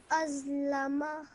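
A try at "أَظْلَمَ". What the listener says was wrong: Just again, make sure you don't stretch the sound out of ma out for too long. Just 1 second. Azlama.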